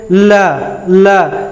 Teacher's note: तो देखिए जीभ कहाँ जा रहा है, दांत के ऊपर, तो हम तो समझ जाएंगे कि यह उच्चारण स्थान जो है वो दंत से हो रहा है।